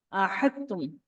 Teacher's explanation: یہاں پر دال سے تا کا ادغام ہوتا ہے، وہ اس وجہ سے ہوتا ہے کہ دونوں کا جو پروناؤنسیشن کی جگہ ہے وہ سیم ہے